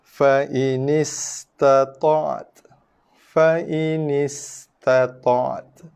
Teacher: Selepas tekanan, kita tekan dulu hujung lidah belakang gigi, lepaskan tekanan berserta dengan keluar sedikit hembusan nafas. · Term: huruf ta